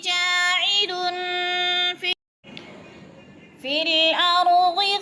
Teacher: لن پہ غنہ ہو رہا ہے، دو پیش کے بعد فا حروف اخفا میں سے ہے تو غنہ